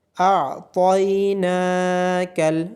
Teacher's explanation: نون کے اوپر کھڑی زبر ہونے کی وجہ سے نون کو لمبا کیا جائے گا۔